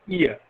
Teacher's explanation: first the tongue assumes one position for articulating E and then the tongue moves towards articulating ah · the quality of the vowel changes there is a movement of the tongue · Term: diphthongs